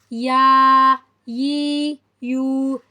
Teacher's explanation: زبان کے بیچ جب اوپر والے تالو کے بیچ میں سے لگتی ہے تو ہمارے پاس یا ادا ہوتا ہے. middle of the tongue with middle of the plate then we can pronounce یا